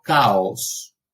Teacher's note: el sonido de la K, de la oclusiva velar sorda